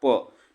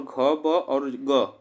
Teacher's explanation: प जो है हमारा अघोष है और घ, ब और ग इसमें हमारा सघोष है